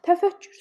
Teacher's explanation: təfəkkür sözündə iki k-dan ikincisi g kimi tələffüz olunacaq